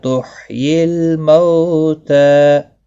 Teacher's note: لام ساکن کو ہلانا نہیں، مو واو لین ہے، تھوڑا نرمی کے ساتھ کھینچ کر ادا کریں گے